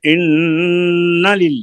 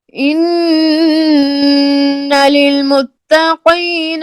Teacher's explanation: أكبر لو كانوا يعلمون إنا नून को للمتقين लंबा नहीं करें, नून के ज़बर को लंबा नहीं करें